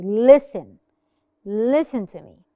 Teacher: No, I don't say the T. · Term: silent T